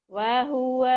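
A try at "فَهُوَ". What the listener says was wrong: Fa. Fa. Kedengerannya wa. Fa.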